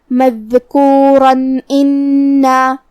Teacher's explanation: اگر ہم یہ آیت کو اگلی آیت کے ساتھ ملا کے پڑھے تو جو کہ کلمت ان میں دوسری والی آیت میں حرف الالف ہے اور الف حروف الاظہار میں سے ہے اور تنوین کی اصلیت نون ساکن ہے تو ہم یہاں تنوین ظاہر کریں گے اور اسے نون ساکن پڑھیں گے اور بغیر غنہ سے یہ حکم کو ادا کریں گے